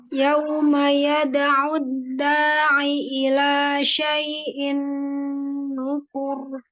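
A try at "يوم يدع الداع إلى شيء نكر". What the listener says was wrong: Rendahin kan mau berhenti. Kan mau berhenti dia. Jadi nada ya, tapi suaranya diturunin. Jangan seperti mau wasol.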